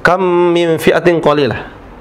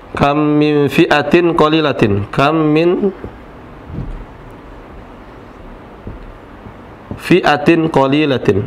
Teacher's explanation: Engkau jadikan huruf yang pertama seperti huruf yang kedua secara bertasydid. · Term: idgham